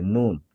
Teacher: নুন হচ্ছে জিহ্বার আগা, তরফুল লিসান বলে, জিহ্বার আগা উপরের তালুর সাথে লাগবে নুন। আর বলার সময় মুখে গোল করা যাবে না, নুন এরকম না, নুন।